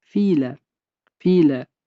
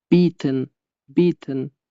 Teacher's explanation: I hamda E harfi ana endi uning teskarisi birga kelganda bir bo'g'in tarkibida I cho'ziq i'ni beradi.